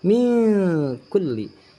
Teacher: ikhfa di mana ada nun sukun bertemu dengan huruf kaf. Membacanya samar. Kaf adalah kategorinya ikhfa ausat, sama seperti yang di atas ayatan, sama ikhfa ausat.